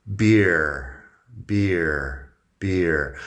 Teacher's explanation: Es un diptongo, ear, beer. Empiezo con una I como I larga, un poco larga